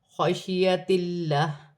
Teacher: اللہ کی لام سے پہلے زیر ہے تو اللہ کی لام باریک پڑھی جائے گی